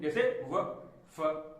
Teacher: अब दंतोष्ठ यानी कि दांत और ओंठ दोनों के काम हो इसमें। जैसे इन ध्वनियों के उच्चारण के समय जीभ दांतों को लगती है तथा होंठ भी कुछ मुड़ जाते हैं, दोनों को काम चल रहा है, मतलब दोनों के जरिए जो है शब्द का उच्चारण हो रहा है, तो ये हो जाएंगे दंतोष्ठ।